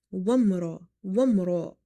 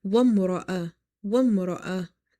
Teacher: ra is heavy because of having fatha on it.